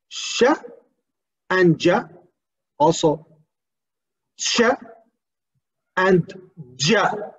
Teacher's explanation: Post-alveolar, between hard palate and alveolar, or between palate and alveolar ridge.